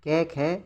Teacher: उच्चारण के समय स्वर तंत्रियों के कंपन नहीं होता। कोई गूंज नहीं होती। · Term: अघोष